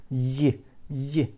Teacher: touch it but put it very close and we'll have ye ye sound with the middle of the tongue middle of the palate